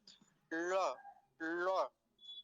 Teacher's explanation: हल्का सा लकार और डकार जैसी ध्वनि इसमें से आती है · लकार को जैसे मूर्धा से बोल रहे हो, मूर्धा, टकार जहां से ट ठ ड ढ और मूर्धन्य शकार बोला जाता है, वहीं से इसका भी उच्चारण होगा।